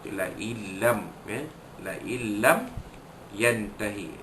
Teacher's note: masukkan bunyi nun mati ke dalam huruf lam tanpa dengung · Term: idgham bila gunnah